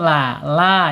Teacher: Tawasut antara tertahannya suara asyiddah dan mengalirnya suara arkhawah ya di tengah-tengah.